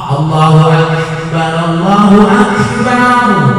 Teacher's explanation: Jadi kaf itu harus ada nafas sedikit.